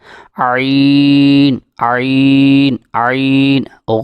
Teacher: عین حلق کے درمیان والے حصے سے ادا ہوتا ہے